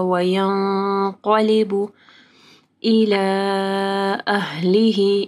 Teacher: الی کے اوپر مد ہے، اس کے بعد حمزہ ہے تو 4 سے 5 حرکات کے برابر لمبا کرنا ہے